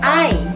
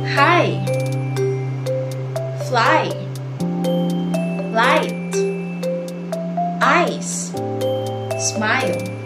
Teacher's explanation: It starts with one vowel sound and slides into another. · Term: diphthong